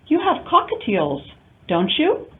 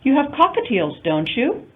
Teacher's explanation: the rising intonation over the tag question signals that you're not sure